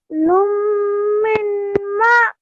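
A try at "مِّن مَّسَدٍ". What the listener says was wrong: Yes, so the noon you're not pronouncing. So make sure you don't pronounce the noon sakin. So straight away, lam would only be left with one dhamma. Join it to the mim mushaddad and then again to the mim mushaddad. Lum mimma.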